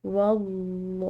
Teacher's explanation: لفظ اللہ کی لام موٹی اور پورا ادا کریں گے کیونکہ واو کی زبر ہے